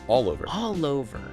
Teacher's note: all links to the O